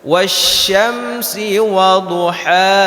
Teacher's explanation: Ha kecil itu letaknya yang pertama di tengah tenggorokan · Yang pertama hak kecil dan yang kedua baru hak besar. Hak kecil itu letaknya yang pertama di tengah tenggorokan, baru turun ke bawah ketika kita membaca hak besar.